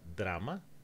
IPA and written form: dɾama (drama)